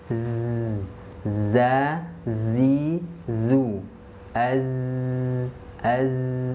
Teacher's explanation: huruf za itu keluarnya dari ujung lidah. Ujung lidahnya sejajar dengan gigi seri bawah.